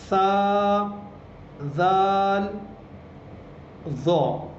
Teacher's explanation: زبان کی نوک اور اوپر کے دانتوں کا کنارہ. یعنی ہم زبان کی نوک کو اوپر کے دانتوں کا جو نیچے کا جو جگہ ہے وہاں پہ ہم زبان کی نوک کو لگائیں گے اور یہ ہمارے تینوں حرف ادا ہو جائیں گے.